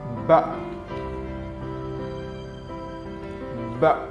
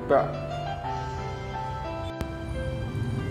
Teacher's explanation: Dari mulut bibir tertutup, ba dibuka.